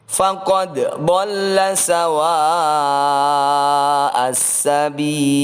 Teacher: Perhatikan huruf dal ini harus dibaca memantul, yaitu bacaan qalqalah sughra.